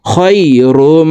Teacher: খ ইয়া জবর খই, র মিম 2 পেশ রুম, খৈরুম। এই তানউইনওয়ালা রটি তাসদিদওয়ালা মিমের সাথে গুন্নার সহিত পড়তে হবে। তো এখানে দেখুন, তানউইনের পর ইদগামে বা গুন্নার 4 হরফের একটি হরফ মিম আসছে, এই কারণে এই তানউইনওয়ালা রটি তাসদিদওয়ালা মিমের সাথে গুন্নার সহিত মিলাইয়া পড়ব।